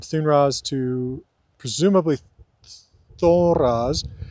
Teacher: with the vowel actually lowering with the loss of that N and being temporarily nasalized